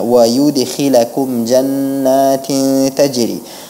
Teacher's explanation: Dan qalqalahnya di situ adalah qalqalah sughra, qalqalah sughra, qalqalah yang kecil, jadi tidak terlalu keras qalqalahnya.